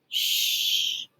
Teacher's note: hand on your throat it doesn't vibrate it is it an unvoiced sound shh it's continuous here's the